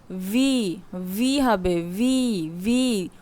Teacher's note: উপরের দাঁত নিচের ঠোঁটের সাথে লাগিয়ে বলতে হবে